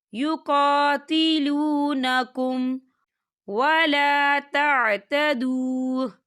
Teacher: یہاں میم ساکن ہے اور میم ساکن کے بعد واو آ رہا ہے، تو یہاں پر اظہار شفوی ہوگا اور ہم اسے بنا غننے کے پڑھیں گے۔